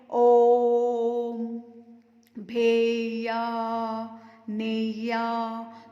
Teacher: अंत में हम पढ़ेंगे उच्चारण में ह्रस्व से तिगुना मतलब 3 गुना समय लगता है। ऐसे वर्ण जिनको बोलने में ह्रस्व और दीर्घ से भी ज़्यादा समय लगता है, 3 गुना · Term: प्लुत स्वर